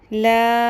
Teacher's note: چھوٹی مد ہے 3 الف کے برابر ہم اس کو لمبا کریں گے